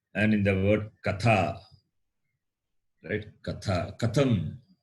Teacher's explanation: So, Tha, Mahaprana. It is Mahaprana and dental.